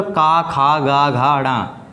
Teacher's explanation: कवर्ग, कवर्ग में पूरा का, खा, गा, घा, ड़ा, ठीक है, पांचों वर्ड आ गए कवर्ग में। और ये सब ये आते हैं हमारे कंठ में।